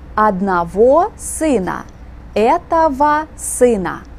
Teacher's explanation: Spelled ОГО, pronounced АВА.